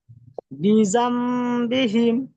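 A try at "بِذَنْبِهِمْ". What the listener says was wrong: জি, মাশাআল্লাহ। জি, এইভাবে পড়বেন,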